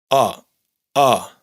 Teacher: La vocal que pronunciamos al neutralizar a y o no es exactamente una a ni tampoco una o, sino que está entre ambas.